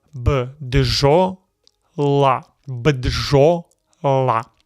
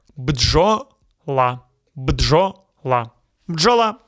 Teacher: No vowel between B, D, and Ž. You say them together.